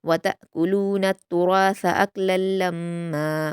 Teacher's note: वतअकुलूना में ता को हमज़ा के साथ मिलाते हुए झटके के साथ पढ़ा जाएगा, क्योंकि हमज़ा पर जज़्म है और जब जज़्म वाली हमज़ा होती है उसको झटके के साथ पढ़ते हैं।